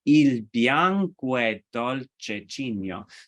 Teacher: in practice, the O and the E get elided. So it sounds more like, and especially how it's set to music, il bianco è dolce Cigno. · even though if you were to say this by itself, il bianco è dolce Cigno, you could say each word by itself, but actually in practice, the O and the E get elided